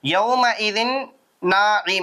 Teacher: கொஞ்சம் மூக்குல வச்சு நின்னு நிதானமா கொஞ்ச நேரம் ம் அப்படின்னு பண்ணனும்